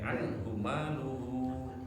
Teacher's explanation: Anhu-nya anhu yang pertama pendek. Anhu maluhu. Nah, luhunya 2 harokat.